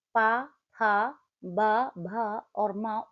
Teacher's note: ओष्ठय व्यंजन उन व्यंजनों को कहा जाता है जिनका उच्चारण में दोनों ओठों दोनों ओठों के स्पर्श से होता है